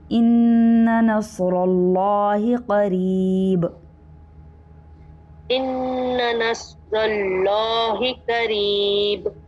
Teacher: دوبارہ سے قاف پر کریں گے، قریب میں را جو ہے باریک ہوگا